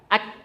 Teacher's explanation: jadi posisi lidah itu nempel. Lidah yang lembek itu nempel ke langit-langit yang keras.